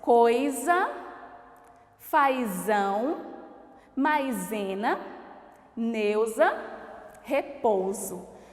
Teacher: nós temos o ditongo oi ai ai eu ou logo em seguida nós temos o s com som de z